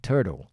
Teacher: ellos meterían la r aquí tur tur y esto lo dejarían en flap sería turtle turtle dejarían como una d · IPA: tɜːt̬ᵊl